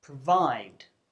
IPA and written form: prəˈvaɪd (provide)